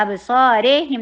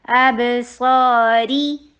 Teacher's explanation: صاد کے اوپر فتحہ آ رہی ہے، ابصاری، را، اتمام الحرکہ، را کے نیچے کسرہ، ای کی ساؤنڈ کرنی ہے، رے نہیں کرنا